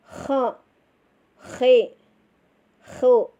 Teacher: Kalau kita mengucapkan huruf kho, pangkal lidah kita harus dinaikkan. Jadi kita harus naik ya, pangkal lidah kita harus naik. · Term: isti'la